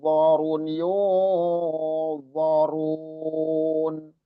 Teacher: Jadi yunnya itu disempurnakan, jangan jangan arahnya ke o, tapi yun, arahnya ke yun